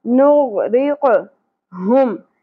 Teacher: نغرق آف پر ادا ہوگا، لہات میں سے ادا ہوگا نرم تالو سے اور قلقلہ بھی ہوگا. نغرق ہم ہا اقصا حلق کے ساتھ